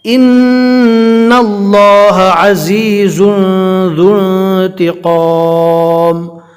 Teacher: یہاں پر دھیان سے پڑھنا ہے، دو زا ہے، یعنی زا میں ہلکی سی سٹی جیسی آواز آئے گی